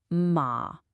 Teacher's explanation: In natural everyday speech, it just goes down and stays down. It's low and a little bit creaky in your throat. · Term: zombie tone